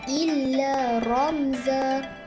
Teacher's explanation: mim sukun bertemu dengan huruf za dibaca dengan jelas tanpa dengung